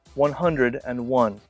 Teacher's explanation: in British English they often say and in the middle of the number